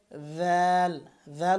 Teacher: দাল উচ্চারণ করবেন জিহ্বার আগা উপরের দাঁতের আগার সাথে লাগিয়ে।